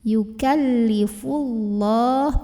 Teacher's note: Ada lam jalalah yang dibunyikan secara tafkhim karena huruf sebelumnya yang fa barisnya dhammah, maka bacanya tebal. Yukallifullah, pangkal lidah dinaikkan.